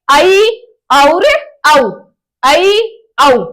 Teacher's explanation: यानी कि विवृत में तो पूरा खुला हुआ है, अर्धविवृत में आधा खुला हुआ है। मुख बिल्कुल लगभग आधा खुला रहता है, उन्हें अर्धविवृत कहते हैं।